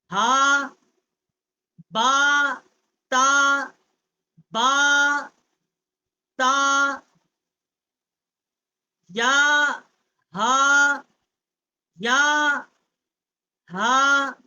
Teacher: ہا اقصائے حلق سے جو سینے کی طرف والا حصہ ہے حلق کا وہاں سے اس کا مخرج ہے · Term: بڑی ہا